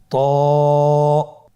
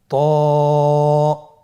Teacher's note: হরফটি মোটা হরফ, এটা উচ্চারণের সময় অবশ্যই মোটা করতে হবে এবং উচ্চারণ করার সময় 1 আলিফ টেনে পড়তে হবে। · ত এর মাখরাজ কোন জায়গা থেকে আপনারা স্ক্রিনে দেখতে পাচ্ছেন। জিহ্বার আগা, সামনের উপরের 2 দাঁতের গোড়ার সঙ্গে লাগিয়ে উচ্চারিত হয়।